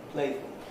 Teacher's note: same thing happens here play has a certain duration in playful the play is shortened playfulness is shortened again